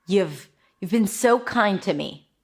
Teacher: Notice how I emphasized the so kind. And then the you have became nothing.